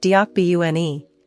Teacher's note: It can sound like P at the end of a syllable, but it's an unaspirated B.